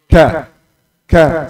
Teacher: Pangkal lidah di makhraj kaf, kemudian tengah lidah, ujung lidah ke dasar mulut.